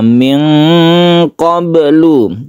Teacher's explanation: Kemudian ada lagi di sini nun mati bertemu dengan jim, ini disebut dengan ikhfa hakiki. Kemudian nun mati bertemu dengan qaf, ini cenderung ke huruf ang ya